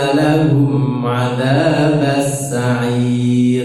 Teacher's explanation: lahum hum memang ketemu ain itu idhar pendek